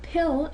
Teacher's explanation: But with pill, if you do the tissue test, there's an extra puff of air.